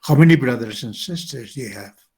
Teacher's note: Este tipo de preguntas que son information questions, la entonación cae.